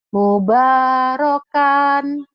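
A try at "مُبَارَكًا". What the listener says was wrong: Mubarakan. Nggak ada yang panjang Bu. Kecuali nanti dihentikan. Mubarokah gitu.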